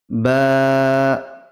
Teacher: ঠোঁটের ভিজে অংশ ঠেকবে ভিজে অংশ ঠেকে ঠেকে থেকে উচ্চারিত হবে দুই ঠোঁটের ভিজে অংশ মিলিত হয়ে উচ্চারিত হয়